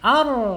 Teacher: ra-nya harus tebal dibaca, tidak boleh bergetar terlalu banyak ya. Cukup maksimal 3 ar ya, seperti orang cedal atau orang cadel, ya, nggak boleh nggak boleh ya.